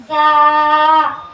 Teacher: زبان کا سیرا اور دونوں دانتوں کے اندرونی کنارے سے ادا ہوتا ہے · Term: ثا